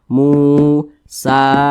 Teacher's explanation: maka huruf sa ini dibaca panjang. Namanya mad tobi'i Panjangnya 2 harokat atau kira-kira 2 ketukan.